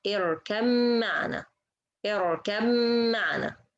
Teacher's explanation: we merge or we make idgham between ba and the mim